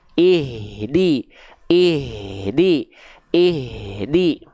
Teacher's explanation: Nafasnya hamsnya terus mengalir